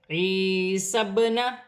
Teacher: با ساکن ہے، حروف قلقلہ میں سے ہے، قلقلہ کے ساتھ ادا کیا جائے گا